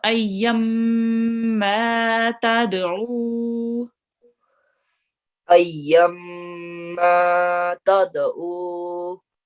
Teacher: ayn here again, which comes from the middle of your throat